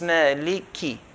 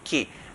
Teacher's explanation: we don't put extra ya and stretch the kaf to 2 counts, like how some people recite Maliki Yawmi. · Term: kasra